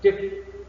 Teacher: the stress syllable is the first syllable